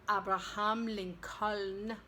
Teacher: it's one of those words that does not pronounce the L in the final syllable